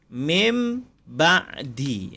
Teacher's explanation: jadi iqlab ini dia ditukar kepada bunyi mim dan didengungkan dengung dia dua harkat